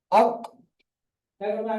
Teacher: আপনি এখানে কম বসান, জিম, জিমের মাখরাজ, এই কফের মাখরাজ আমরা কি পড়েছি, জিহ্বার গোড়া এবং তার বরাবর উপরের তালুর সাথে লাগিয়ে উচ্চারিত হবে কফ